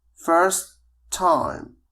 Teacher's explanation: سوف نقوم بربط كلتا الكلمتين بالتي واحدة ونقول first time